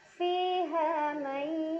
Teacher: Fiha may, ada idgham bi gunnah karena ada nun sukun yang bertemu dengan huruf ya. Cara bacanya nun sukun dileburkan atau dimasukkan ke huruf ya sambil dengung.